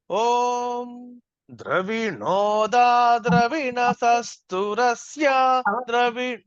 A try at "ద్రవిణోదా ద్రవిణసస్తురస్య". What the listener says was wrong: మీరు ఏం చేస్తున్నారంటే ద్రా మొత్తం కిందకి అంటున్నారు. ద్రవిణోదా ద్రవిణోదా, అది తేడా.